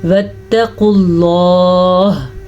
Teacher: قاف کو پر پڑھنا ہے اور اللہ کے نام کو بھی پر پڑھنا ہے کیونکہ اللہ کے نام سے پہلے پیش ہے